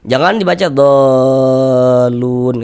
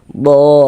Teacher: dipanjangkan dengan panjang 6 harokat. Panjangkan 6 harokat, ujungnya itu dikasih nabar, dikasih tekanan. Ditekan gitu. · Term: mad lazim kalimi mutsaqqal